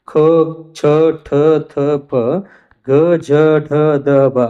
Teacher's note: ಹೆಚ್ಚು ಉಸಿರನ್ನ ತೆಗೆದುಕೊಂಡು ಉಚ್ಚರಿಸಲ್ಪಡುವಂತ ಅಕ್ಷರಗಳಿಗೆ ನಾವು ಏನಂತ ಕರೀತೀವಿ ಅಂತಂದ್ರೆ ಮಹಾಪ್ರಾಣಗಳು. ಮಹಾಪ್ರಾಣಗಳನ್ನ ಇಲ್ಲಿ ಹತ್ತು ರೀತಿಯೊಳಗೆ ನಾವು ನೋಡ್ತೀವಿ. ಖ ಛ ಠ ಥ ಪ